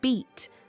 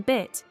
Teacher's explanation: in beat, the vowel is long, whereas in bit, it is short. Although the consonants remain the same, the difference in vowel length changes the meaning.